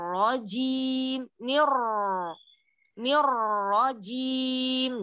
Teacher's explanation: Memang dia harus bergetar, tetapi terdengar tidak tebal tadi. Jadi karena ro berharokat fathah itu harus tebal.